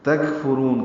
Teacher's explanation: تکفرون، کاف ساکن پہ ہم سے را پر پڑھیں گے، را کو لمبا کریں گے، وقفاً مد عارض للسکون ہے